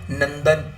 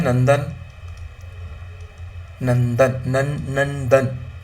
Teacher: Okay, अब देखो क्या है इसका उच्चारण जो है, अनुस्वार, देखो क्या है, जो नाक से, ठीक है, नाक से जो उच्चारण निकलता है जिन शब्दों का, तो वो सारे के सारे अनुस्वार के अंतर्गत आ जाएंगे, राइट। मतलब क्या, इनका उच्चारण नाक से होता है।